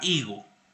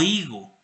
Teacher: Entonces, en la Edad Media había, por ejemplo, dos posibilidades de decir la palabra higo. Higo, con la aspiración, con el elemento glotal, o higo, con el cero fonético